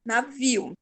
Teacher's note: eu falo o iu bem rápido.